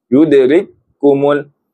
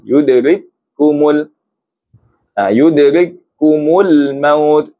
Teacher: Itu tak ada tekanan. Dia kena tekan sebab ada dua huruf di dalam huruf yang bertanda tasydid ni. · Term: idgham mutamathilain